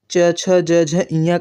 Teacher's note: इनका उच्चारण स्थान तालव्य से इनका उच्चारण होता है